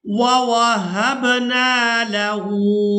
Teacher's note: हा को उल्टा पेश की वजह से खींच कर अदा करेंगे